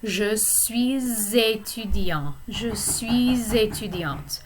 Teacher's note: because the word étudiant begins with a vowel sound, the S at the end of suis is pronounced